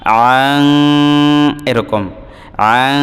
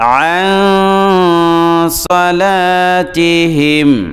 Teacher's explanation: কোনো অক্ষর আসে তো সাদ এটা হলো ইখফার অক্ষর তখন এই নুন সাকিনটা আসলে নাকের ভিতরে গিয়ে উচ্চারণ হয় সরাসরি নুন উচ্চারণ হয় না